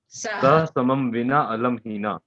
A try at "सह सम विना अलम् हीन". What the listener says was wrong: हीना नहीं, सह, सह मीन्स साथ, के साथ, ठीक है।